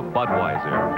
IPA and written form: ˈbʌdwaɪzər (Budweiser)